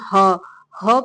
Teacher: ह का उच्चारण भी जो है कंठ से ही होता है